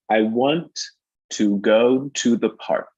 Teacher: I want to, that ends in this t sound, the want, and then the to begins in the same place. So right away, my impulse is to bring those together, want to connect them.